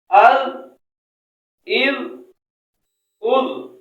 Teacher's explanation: زبان کی نوک اور اوپر والے دانتوں کا کنارہ۔ اد، اذ، اد نرمی سے لگائیں گے، سیٹی کی آواز نہیں آنے دیں گے۔